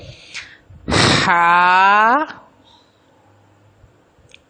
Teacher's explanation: ہا جو ہے وہ وسط حلق سے ادا ہوتی ہے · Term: حروف حلقی